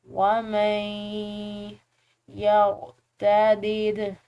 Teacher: नून साकिन है, इसके बाद या है जो कि 4 हरूफ या वाव मीम और नून में से है, तो इसको हमने इदगाम बिल गुन्ना या इदगाम नाक़िस के साथ पढ़ना है